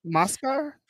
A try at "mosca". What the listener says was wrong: No, you're confusing mascara and mosca. Mosca is fly. Mascara is mask. You're saying like when you say mascara, it's like if you're saying mascara, like mas face.